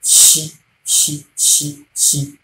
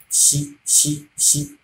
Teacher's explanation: The blade of the tongue will rise up to your palatal alveolar. That hole at the on top of your at the peak of your mouth. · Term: fricative sound